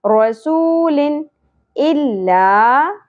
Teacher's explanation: واؤ ساکن حرف مدہ ہے اور اگے اظہار ہوگا کیونکہ تنوین کے بعد حمزہ نیکسٹ کلمہ کے سٹارٹ میں اگیا